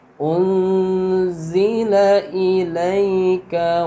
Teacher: Jadi maka nunnya dibaca gunnah samar dengan dengung ya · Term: ikhfa